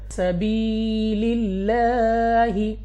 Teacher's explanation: پڑھنا ہے اپنی آواز کو نیچے گرا کر